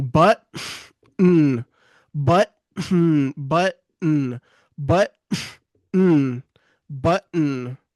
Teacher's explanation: And he's breathing through his nose at the same time he's saying the N. · It's easier to stop the air in your throat and quickly direct it through your nose for the button. That's essentially how the glottle T sound works. · he stops breathing for a second so that he can redirect it through the nostrils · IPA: ʔ